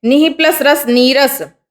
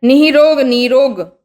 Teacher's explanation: विसर्ग को तो गायब करना ही करना है, लेकिन विसर्ग से पहले वाले व्यंजन की जो मात्रा है, मतलब छोटी ई है तो बड़ी ई बनानी है, छोटा ऊ है तो बड़ा ऊ बनाना है।